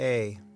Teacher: That sound is produced in the throat where the tongue is rooted. So audible sound begins with A.